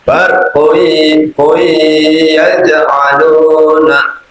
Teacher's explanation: Jadi harus mendengung dulu. dhammah tanwin ketemu dengan ya, itu harus dengung dulu. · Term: idgham bihunah